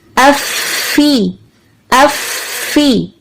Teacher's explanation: افا افا، دھیرا نہیں رکھنا، افا افا افی افی. اف کرنے کے بعد فی کے لیے ہم نے نیچے والے جبڑے کو نیچے کی طرف حرکت دی، تو کیا ہوا، دانت اور ہونٹ کے اندر جدائی ہو گئی، لیکن آپس میں کیونکہ یہ مخرج سے جڑنے کے بعد جدا ہوئے تو فا کی آواز واضح ہوئی، فی افی.